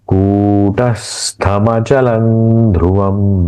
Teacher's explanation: इस अनु जो अनुस्वार का उच्चारण न के जैसा होगा।